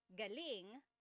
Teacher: if the emphasis is on the second syllable galing that means good or great or excellent